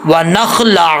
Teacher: ونخلع، عین کے اوپر پیش ہے، عین کو عین ہی پڑھنا ہے، عین کو حمزہ نہیں پڑھنا. اکثر لوگ حمزہ پڑھ جاتے ہیں.